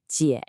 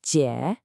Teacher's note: Your voice actually dips down and then comes back up. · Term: third tone